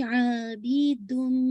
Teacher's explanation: बी बाकी कसरा sharp रखिएगा, तनवीन के बाद मीम है तो इदगाम कामिल मुकम्मल आवाज मीम के अंदर मर्ज हो जाएगी, आबिदुन। फिर आपने गुन्ना भी करना, फॉर होल्ड फॉर 2 काउंट, ठीक है इंशाल्लाह। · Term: इदगाम कामिल विद गुन्ना